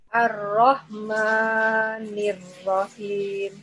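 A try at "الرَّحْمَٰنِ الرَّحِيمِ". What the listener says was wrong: Panjangan maknya 2 harokat saja, 1 ayunan.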